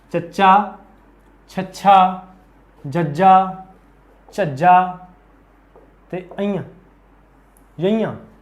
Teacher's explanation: इन्होंने बोलने वेले जीभ है जिहड़ी तालू नाल टकराउंदी है, इस करके इन्हां दा नाम है तालवी व्यंजन